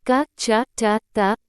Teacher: जब श्वास वायु का मार्ग पूरी तरह से रोककर फिर छोड़ दिया जाता है, जैसे क, च, ट, त, प आदि। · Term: स्पर्श